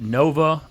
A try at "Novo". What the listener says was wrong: I think it's Novo. And when you're Italian, you got to pronounce the O pretty hard.